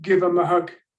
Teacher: The TH of them has been cut. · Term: elision